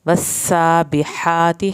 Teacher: सीन की शद पे देर लगा के सीन को सीटी की आवाज़ में अदायगी करनी है, खड़ी ज़बर।